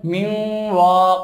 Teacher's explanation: নুনটা ওয়াও এর সাথে মিলে যাবে এবং গুন্না হবে, এক আলিফ পরিমাণ গুন্না করতে হবে। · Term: গুন্না সহ ইদগাম